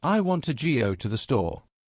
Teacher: The sentence I want to go to the store has 11 syllables but only four stressed beats.